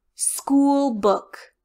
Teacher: the word school book you have a small tight o school followed by a loose wide mouth book